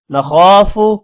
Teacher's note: خو کو موٹا کریں گے، خو کے بعد الف لمبا بھی کریں گے، فو کو لمبا نہیں کرنا.